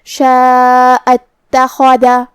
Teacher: تا پہ تشدید ہے لہذا 2 حرف کے برابر ہمیں تا کو پڑھنا ہے. خا کی ادائیگی حلق کے اوپر والے حصے سے ہے. · مد واجب متصل میں ہم اپنی آواز 4 مد کے برابر لمبی کریں گے. کلمت اتخذ میں شروعات میں حمزہ وصل ہے. ہم حمزہ کو ظاہر نہیں کریں گے. کلمت شاء کے بعد حرف تا پڑھیں گے. · خا کی ادائیگی حلق کے اوپر والے حصے سے ہے. خا حروف تفخیم میں سے بھی ہے تو ہمیں یہ حرف کو بھاری آواز میں ادا کرنا ہے.